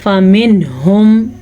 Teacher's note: نون ساکن کے بعد ہا ہے تو اس کو اپنے ظاہر کر کے بغیر غننے کے پڑھنا ہے